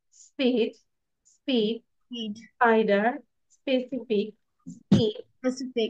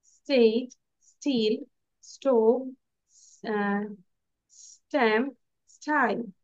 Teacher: আমরা নরমালি উচ্চারণ করব কোন বাতাস বের হবে না